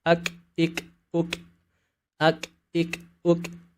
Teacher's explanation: Huruf kaf mungkin sama dengan huruf K, tapi memiliki perbedaan pada sifat hams, di mana ketika huruf kaf dalam kondisi sukun terdengar ada bunyi aliran nafas.